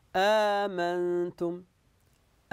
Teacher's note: المد في الالف هذه مثلها مثلها مثلها اذن الالف هنا نمددها هذا مد يسمى مد بدل وهو مثل مد الطبيعي لمده مقدار حركتين المهم ان تطبق المد فيها مد عادي عادي عادي امنتم امنتم